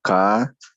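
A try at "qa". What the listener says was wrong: No, me estás pronunciando igualito que esto. Esto es castellano, o sea, esto conocemos, es sonido del castellano. K normal, ¿eh? Luego digo K y K. Ahora esto, ya, A. Ya, entonces nuevamente voy a dibujar la boquita, ¿ya?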